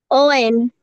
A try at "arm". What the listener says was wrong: arm, tiene que ser la segunda. Arm, dice OM y es arm, arm. Tiene que decir arm, arm.